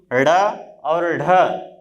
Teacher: द्विपृष्ठ, द्विपृष्ठ इसलिए कहा जाता है क्योंकि जब हम इन वर्णों का उच्चारण करते हैं तो हमारी जिह्वा एक बार तलवे में जाके स्पर्श करती है, फिर पलट के नीचे की तरफ आती है, इसलिए इसको द्विपृष्ठ भी कहते हैं।